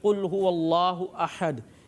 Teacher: اب جیسے قل هو اللہ احد، اس کے اندر خاص طور پر قاف کی جو ادائیگی ہے، ایک ہوتا ہے کاف جو ڈنڈی والا ہوتا ہے وہ باریک ادا ہوتا ہے، اور جو 2 نقطوں والا قاف ہوتا ہے اس کو موٹا ادا کرنا ہوتا ہے